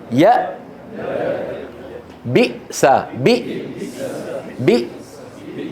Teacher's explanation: أقصى الحلق منطقة الأوتار الصوتية، هذه يعني هنا. الهمزة الساكنة تخرج بانقفال الوترين. انظروا إلى الصورة في اليمين هذه، انظروا كيف أن الوترين الصوتيين منقفلان.